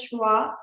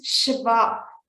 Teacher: there is no W sound so we do not pronounce it as shua it is Shiva so your teeth have to touch your lower lips